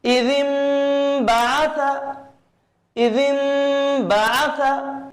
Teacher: यहां पर इक़लाब भी होगा और साथ ही साथ नाक में आवाज को भी रोका जाएगा। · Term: गुन्ना